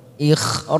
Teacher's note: Ghaira ikhraj kita panjangkan 4 ketuk atau 4 harokat dan ujungnya kita pantulkan karena ada huruf jim namanya qalqalah kubra.